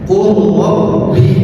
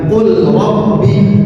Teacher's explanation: Yang ketiga contohnya antara lam bertemu dengan ro. Lam bertemu dengan ro. Cara membacanya dengan diidghamkan. Qulabbi bukan qul rabbi tapi qur.